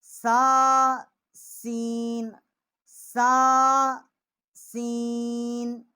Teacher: سا سین، سا سین، اور یہ دونوں جو ہیں سا اور سین ہو گیا، اور ان کا مخرج جو ہے ایک ہی ہے کیونکہ یہ آواز جو ہے ان کی سیٹی کی طرح جو ہے وہ آتی ہے